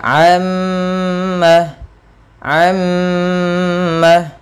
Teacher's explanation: di sini salah satunya yaitu gunah ketika adanya Nun mim Maaf adanya mim tasdid atau Nun tasdid cara membacanya yaitu menahan suara mimnya sepanjang dua harakat